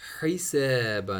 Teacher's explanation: حا middle throat سے